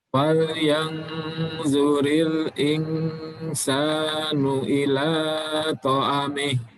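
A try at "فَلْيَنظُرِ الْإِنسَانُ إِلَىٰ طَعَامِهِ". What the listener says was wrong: Ta'ami. Ainnya panjang.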